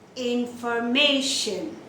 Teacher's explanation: then the stress will be on the second last syllable